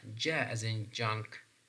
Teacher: So this is also voiced post-alveolar affricate sounds.